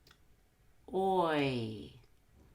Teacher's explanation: make sure you round your lips on the O and smile on the e